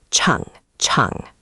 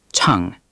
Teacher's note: Second, chang, is tone 3, the dip.